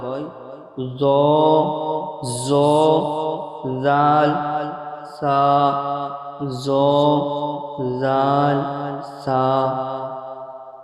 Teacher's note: 12 নম্বর মাখরাজ জিবের আগা এবং সামনে উপরে দুই দাঁতের আগার সাথে লাগিয়ে উচ্চারিত হয়